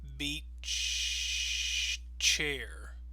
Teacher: So notice we kind of pause a little bit before we get to the second word